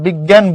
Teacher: আমরা যখন বিজ্ঞান বলি, উপরে কিছুটা নাসিক্য প্রভাব পড়ে, নাকের কিছুটা ঝোঁক পড়ে